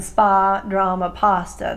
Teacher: parts of Queens and Long Island will make it the wider a vowel sound as in spa drama pasta